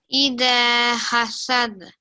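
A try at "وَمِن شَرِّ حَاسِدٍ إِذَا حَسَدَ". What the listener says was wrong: Well done, well done.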